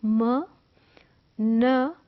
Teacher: नोज is involved इन म sound and न साउंड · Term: नेज़ल साउंड्स